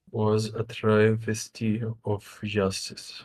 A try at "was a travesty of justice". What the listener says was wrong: Travesty, we start high.